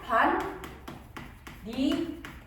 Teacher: 비음까지 적용이 되면은 반니랑이라고 하면 되는 거야